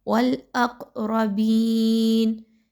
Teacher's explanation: یہ جو ہلا کر پڑھنا ہے، اق کی جو آواز ہے اسی کو قلقلہ کہا جاتا ہے